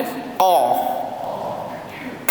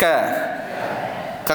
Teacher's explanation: huruf Kaf dengan ka makhraj yang sama dia duduk di anak tekak ataupun dia panggil anak lidah kat sini